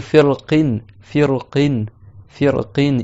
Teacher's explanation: Ici le ra, il est allégé parce que tu as prononcé la kasra sur le qaf.